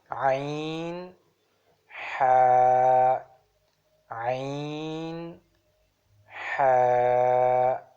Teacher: 2 letters from middle of the throat. It's the third articulation points, 2 letters: ain, ha, ain, ha.